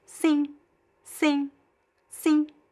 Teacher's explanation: there's no clear N sound, okay? It's just a nasal vowel.